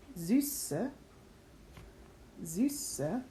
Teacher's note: S set, always S, so we get a Z and an S sound in the same word